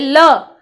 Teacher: पार्श्विक व्यंजन इसे हम क्यों कहते हैं, क्योंकि ये वायु के जीभ मतलब जो हमारे मुख से वायु निकलती है, वो जीभ के बगल में से होके निकलती है, साइड से, ल। ठीक है, जीभ ऊपर की तरफ लगेगी और साइड में से वायु निकलेगी, तो हम क्या कह सकते हैं इसको, पार्श्विक व्यंजन।